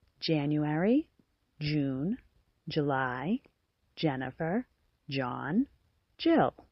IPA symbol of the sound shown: dʒ